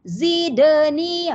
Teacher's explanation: pada dal tu bunyi de. Itu dipanggil sifatnya qalqalah dipanggil, ya. Qalqalah sugra. Ya, ya, sebab dal sukun, ya.